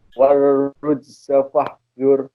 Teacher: Roknya pakai tasdid warujza, tebal. Pakai tasdid dan tebal.